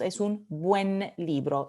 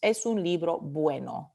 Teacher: no decimos es un bueno libro decimos es un buen libro se pierde la última vocal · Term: apócope